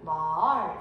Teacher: 상성은 낮았다 높아지는 소리예요